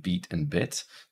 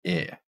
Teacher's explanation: with beat your tongue is tense and in bit your tongue is not as tense in other words it's a little bit more towards the center